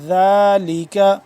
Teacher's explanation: نرمی سے ذال کو پڑھیں گے لمبا بھی کریں گے